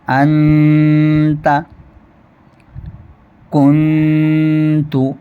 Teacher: جب ہم انتا کا غنہ کریں گے تو اس میں جو زبان کی نوک ہے وہ تالو سے نہیں لگنی چاہیے۔ تالو سے ہٹا کر کے ہمیں غنہ کرنا ہے، یعنی اخفاء کرنا ہے۔ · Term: اخفاء حقیقی